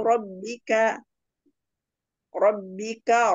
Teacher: ro berharokat fathah baca tafhim